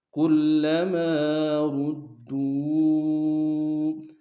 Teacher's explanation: کلما میں لام کے اوپر شد زور دیں گے